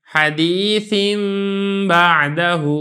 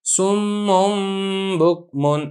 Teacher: نون تنوین کے بعد با آ گیا تو آپ نے یہاں پہ میم پڑھنا ہے، نون تنوین نہیں پڑھنا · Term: قلب